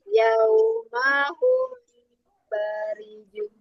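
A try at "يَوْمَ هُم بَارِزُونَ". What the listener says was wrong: Oke, zainya kurang alir. Barizun.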